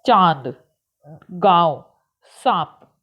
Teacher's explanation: जिन शब्दों का उच्चारण नाक और मुंह दोनों से किया जाता है और इन्हें लिखने के लिए चंद्र बिंदु का प्रयोग किया जाता है उन्हें अनुनासिक शब्द कहते हैं।